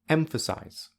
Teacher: the third syllable has secondary stress because it is quite loud quite high and quite long · The first syllable has primary stress because it is the loudest, the highest, and the longest. The second syllable has zero stress because it is the least loud, the least high, and the least long.